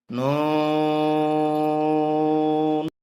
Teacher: লাম মিম হরফটি বলতে উভয় ঠোঁট মিলিয়া শুরু হবে, উভয় ঠোঁট মিলিয়া শেষ হবে, 4 আলিফ পরিমাণ লম্বা হবে, ওই সময়টা মুখ খুলে থাকবে। মিম, নুন, 4 আলিফ টানতে হবে, জিহ্বার আগার তালুতে লাগবে